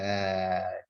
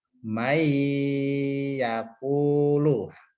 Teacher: Ini nun sukun atau tanwin bertemu dengan huruf salah satu yanmu. Maka bacanya dengung. Dengung ini berarti ditahan lama.